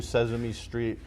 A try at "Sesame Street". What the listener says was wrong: Did you say Sesame, like with a Z?